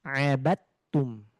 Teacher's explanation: Dibacanya abatum. Dalnya langsung dihiraukan atau tidak dianggap, langsung masuk ke huruf ta.